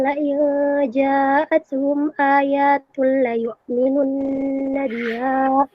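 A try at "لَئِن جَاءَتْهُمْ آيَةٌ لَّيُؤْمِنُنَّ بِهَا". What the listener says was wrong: Iyahnya pendek. Ya itu iyahnya pendek. Karena mufrad.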